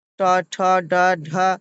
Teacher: এবং ট বর্গের ট, ঠ, ড, ঢ মূর্ধন্য উচ্চারণে জিহ্বা অগ্রভাগ উল্টে মূর্ধা স্পর্শ করে